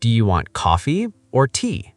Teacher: Up on coffee, down on tea.